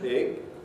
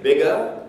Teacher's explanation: I could say it almost big. Almost no voice at all in that final G sound. But if I say bigger, then the voice will go all the way through.